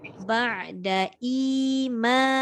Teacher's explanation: I tak boleh pendek sebab hamzah dengan ya.